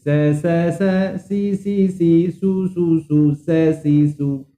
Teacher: Kalau Cik sebut sin tu huruf tha sebenarnya. Sin tak payah pakai gigi, terutama gigi depan. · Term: huruf sin